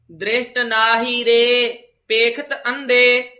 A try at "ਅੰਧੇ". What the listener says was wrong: ਅੰਧੇ ਧੰਦੇ ਦੋਵੇਂ ਧੱਦੇ ਬੋਲਨੇ, ਦੱਦੇ ਨਹੀਂ ਬੋਲਨੇ।